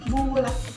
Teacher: posisi lidahnya berada di belakang mulut dan cukup tinggi. Untuk bibirnya membulat.